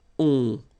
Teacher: Okay, and then the ending for il, elle will be ont. You don't pronounce the final t, so you get the nasal on.